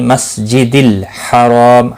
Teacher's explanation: را الف مدہ ہے، ایک الف کے برابر کھینچ کر پڑھیں گے، رو زبر کی وجہ سے پر بھی پڑا جائے گا، وقف کی صورت میں میم ساکن پڑا جائے گا، اور ملانے کی صورت میم کی حرکت کو بھی پڑا جائے گا۔